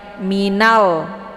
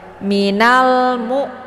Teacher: alif lam al-qamariyah, juga dibaca jelas bunyi l-nya.